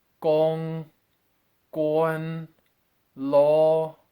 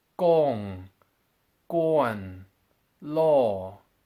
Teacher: The double 1 tone is a number 1 tone which falls.